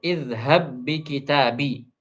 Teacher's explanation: Karena kita sudah idghamkan, maka qalqalah tidak ada lagi. Kemudian hams juga tidak ada lagi.